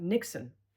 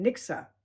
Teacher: we were learning the Amsterdam accent, which is dropping the N at the end of verbs